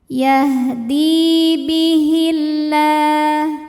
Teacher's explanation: Lam jalalah dibaca secara tarqiq sebab didahului harokat kasrah. Maka huruf lam dibaca tipis, bunyinya lah, bihillah, ringan.